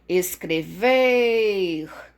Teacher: a sílaba tônica é o ver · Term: oxítona